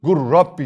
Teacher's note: üzere Gul Rabbi dersin hayır artık sen idgam mütekaribeyn kuralını biliyorsun lamı gizliyorsun şed veriyorsun gur Rabbi şeklinde